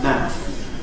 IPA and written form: mæəf (mouth)